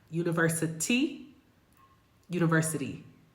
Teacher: They call it a flap because it's actually created by the tongue hitting the top of the mouth, the roof of the mouth. And it sounds more like a D than a T, but it's a fast D. I always tell my students, this is a fast D. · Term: flap T